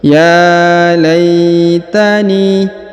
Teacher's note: huruf ni dipanjangkan 2 harokat karena di depannya terdapat ya sukun. Meskipun tidak terdapat titik 2 di sini, tapi sudah dimaklumi setiap ada laitani ni-nya dipanjangkan 2 harokat ya, karena ada ya sukun.